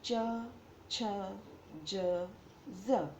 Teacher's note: જે વ્યંજનનું ઉચ્ચારણ વખતે જીભ તાળવાને અડે છે તેવા વ્યંજનને તાલવ્ય વ્યંજન કહે છે.